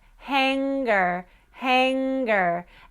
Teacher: And then try at the back of the mouth, hanger, hanger. And if you get that G sound very clearly at the end of the hanger before the ger part, then you've got clarity in the back of the mouth as well